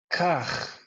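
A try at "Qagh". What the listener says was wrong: It sounds a bit like this word, kach, the way you said it. So try it again, but try voicing this more, which means you're vibrating your vocal cords.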